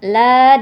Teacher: la dibaca panjang dua ketukan karena ada fathah diikuti Alif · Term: Mad Thobi'i